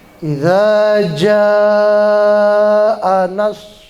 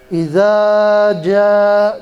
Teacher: Tapi berhubung setelah huruf mad, setelah huruf alif ada huruf hamzah yang berada dalam satu kata, dia berubah menjadi mad wajib muttasil. Panjangnya sampai 6 harokat. Panjang. Dikasih tanda supaya kita mempermudah untuk membedakan panjangnya dengan mad asli, maka di atasnya dikasih tanda tuh seperti bendera gitu kan.